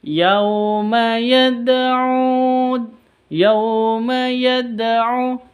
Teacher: Jadi ada qalqalah sugro di sini karena ada tandanya dal sukun. Dalnya sukun, maka itu qalqalah sugro.